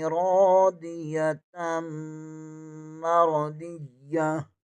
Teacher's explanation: दो ज़बर को मीम के साथ मिलाएंगे, मीम मुशद्दद है, इसे यहाँ पर गुन्ना लाज़मी होगा। मीम को भी दो बार पढ़ेंगे, मीम ज़बर को रॉ के साथ भी मिलाएंगे।